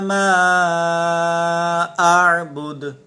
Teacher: آخری جو کلمہ ہے اس آیت کا ما اعبد، یہاں پر دیکھیں دال کو ہم نے قلقلہ کیا اس میں